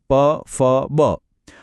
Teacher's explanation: જ્યારે બંને હોઠ ભેગા થઈને ખુલે ત્યારે ઓષ્ઠીય વ્યંજનો બને છે